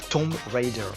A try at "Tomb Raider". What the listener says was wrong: Ah, c'était presque ça, Tomb Raider. Le B ne se prononce pas.